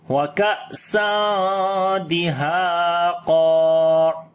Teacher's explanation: یہاں پر الف اور قاف دونوں کو موٹا پڑھیں گے اور لمبا بھی کریں گے